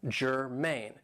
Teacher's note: Now this is 2 syllables and the stress is on the second syllable